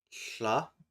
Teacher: What about the voiceless lateral fricative?